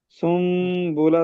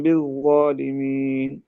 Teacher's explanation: تنوین کو میم سے بدل دیں گے اور غنہ ہو جائے گا